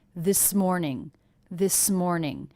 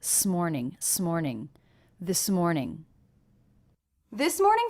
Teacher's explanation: One of the first things I notice is how much this S and M were connected.